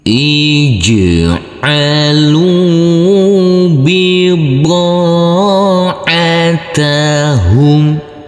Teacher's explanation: Huruf jim yang bersukun ini harus kita pantulkan karena ini adalah bacaan qalqalah.